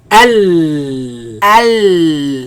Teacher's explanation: This comes from right after the teeth, right after the roots of the teeth, in a place called litha. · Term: lam